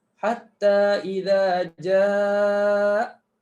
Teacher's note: tak berlaku buang, tak berlaku hadzaf. Hatta idza jaa. Clear dia bunyi dengan adanya hamzah